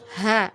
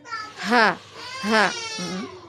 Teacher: Cukup di leher, tengah leher ya, di tenggorokan bagian bawah ya makhrajnya. H ya, jangan terlalu ke bawah ya, sampai di dada.